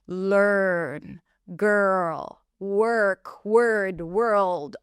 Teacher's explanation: This R vowel actually is not really a vowel. The R eats up the vowel and we just hear a strong er sound. Er as in stir.